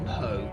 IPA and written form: poʊ (Poe)